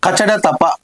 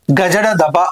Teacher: కచడ తపల యొక్క ఉచ్చారణ గజడ తపల యొక్క ఉచ్చారణ కంటే కఠినము మరియు పరుషము కాబట్టి ఈ కచడ తపలను ఏమంటారు అని అంటే పరుషాలు అని అంటారు.